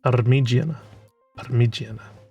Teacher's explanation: It has the rolled R in it.